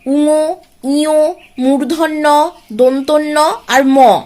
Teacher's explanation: এই বর্ণগুলো উচ্চারণের সময় মুখের ভেতরের যে বাতাস, সেটা শুধুমাত্র মুখ বিবর দিয়ে না বের হয়ে নাক দিয়েও খানিকটা বের হয় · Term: নাসিক্য বর্ণ